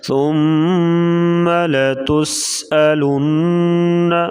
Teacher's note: نون کے اوپر پھر شد آ گئی, یہاں پر غنہ کریں گے